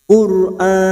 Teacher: Qur'an, pada saat mewaqafkan hati-hati, huruf nun ini harus terasa, jangan tertukar huruf mim atau tidak terbaca